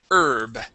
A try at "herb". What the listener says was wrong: Instead of herb, it is herb. Yeah, so the H here is silent.